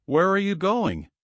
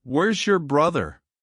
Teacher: Voice falling down at the end.